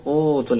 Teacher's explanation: udul ini baca panjang u-nya wau sini baca panjang ada wau sukun